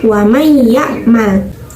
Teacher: ya'mal dalam lafadz lafadznya itu ditulis Wa man ya Mal tapi karena nun-nya melebur ke huruf Iya maka Nun nya tidak terdengar